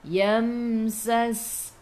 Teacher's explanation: Sas masuk ke dalam sin, sin ada sukun, sifat huruf sin safir kena bunyikan